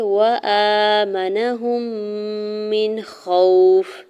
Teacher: خوف۔ میم کی زیر کو نون ساکن کے ساتھ ملاتے ہوئے اظہار حلقی ہوگا، یعنی غنہ یا اخفا یہاں پہ نہیں ہوگا کیونکہ نون ساکن کے بعد خوا جو ہے وہ حروف حلقے میں سے ہے ۔ واو ساکن سے پہلے خوا کے اوپر زبر ہے، واو · کے بعد خوا جو ہے وہ حروف حلقے میں سے ہے۔ واو ساکن سے پہلے خوا کے اوپر زبر ہے، واو لین ہو رہا ہے، نرمی سے موڑتے ہوئے ادا کریں گے · ہے، نون کی زبر کو بغیر کھینچے ہوئے ادا کریں گے، ہا کی پیش کو میم مشدد کے ساتھ ملاتے ہوئے میم مشدد پہ یہاں پہ غنہ کریں گے